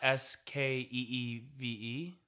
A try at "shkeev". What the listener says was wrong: No, you're missing an H. It's not skeev, it's shkeev. Shkeev. Skeev is broad, but shkeev is what I'm hearing.